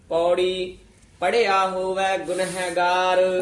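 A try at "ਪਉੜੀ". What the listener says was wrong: ਪੌੜੀ ਨਹੀਂ ਕਹਿਣਾ, ਪਾ ਪੂਰਾ ਊੜਾ ਉਚਾਰਨ ਕਰਨਾ ਹੈ।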